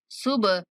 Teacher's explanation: با پر کلکلا کریں گے، ہا کو کھینچ کے پڑھیں گے